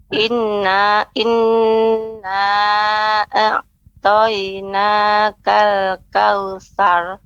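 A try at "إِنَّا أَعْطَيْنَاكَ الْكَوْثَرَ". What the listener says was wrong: Sar. Nah, itu masih apa namanya? Belum ada tebalnya Ibu. Artinya kalau kautsar, itu masih tipis. Tapi harus dinaikkan, diangkat suaranya sar ya. Nah, diangkat suaranya sar.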